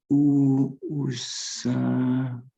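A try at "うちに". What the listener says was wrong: It's not. No, it looks like sa. It's the other way around. It's chi. With chi.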